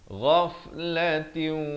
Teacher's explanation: ghaf ghain di ujung kerongkong ini